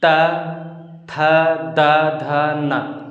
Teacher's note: जीभ हमारा जो है ये ऊपर के दांतों को टच करता है अंदर साइड से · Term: दंत्य